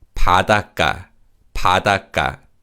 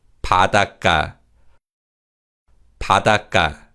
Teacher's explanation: when we pronounce this word, the 받침 시옷 is silent, and 기역 in 가 is pronounced as 가.